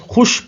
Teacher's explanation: مثال کے طور پر لفظ خوش کو دیکھیے، اس کی ادائیگی محض خوش پڑھنے سے بھی ہو جاتی ہے، یعنی واو لکھنے میں تو آیا ہے لیکن پڑھنے میں نہیں آیا